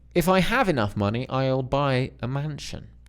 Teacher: For different clauses, it's a rise and fall.